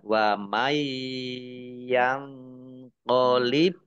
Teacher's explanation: nun sukun bertemu dengan huruf ya bacaan idgham bi gunnah masuk dengan mendengung, yaitu mendengung ya, kan ditahan ya, dua harokat.